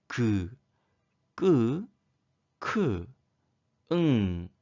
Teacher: 있습니다 자 다시 한번 발음 해볼까요 그 그 으음 하는 소리는 혀의 뒷부분과 입천장 뒤쪽에 말랑말랑한 부드러운 부분 사이에서 나는 소리입니다 이런 소리를 우리는 여린 입천장 소리라고 합니다 마지막 목청 소리입니다 목